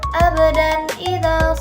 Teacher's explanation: Izhar dibaca jelas tanpa dengung